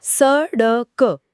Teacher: जब हम ण या ढ का उच्चारण करते हैं तो हमारी जीभ की नोक पहले ऊपर तालू की तरफ पीछे मुड़ती है और फिर एक झटके के साथ नीचे गिरती है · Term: उत्क्षिप्त